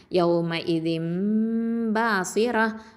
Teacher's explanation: இக்லாப்னா மாற்றுதல். நூன் சுக்குன் வந்து மீமாக மாறிடுச்சு